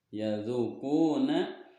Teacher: Yadzuquna masuk ke dalam hukum mad tabi'i karena huruf dzal berharokat dhammah bertemu wawu sukun dan setelah tidak bertemu hamzah, maka dipanjangkan, cara membacanya adalah 2 harokat. Quna ini juga sama mad asli atau mad tabi'i kan huruf qaf di dhammah di depannya bertemu dengan wawu mati, maka panjangnya 2 harokat.